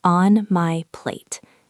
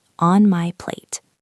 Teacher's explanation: The T at the end of plate is often a stop T in English. We don't always say plate, we just stop the air.